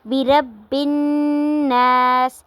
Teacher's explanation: نون مشدد ہے، اس کے اوپر غنہ ہوگا۔ آواز کو ناک میں لے کے جانا ہے اور تھوڑی دیر کے لیے ناک میں روک کر رکھنا ہے۔